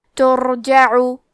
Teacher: جیم پہ زبر ہے اور عین پہ پیش ہے، تو ہمیں یہ دونوں حرکات کو ظاہر کرنا ہے، اور عین کی ادائیگی حلق کے درمیان والے حصے سے ہے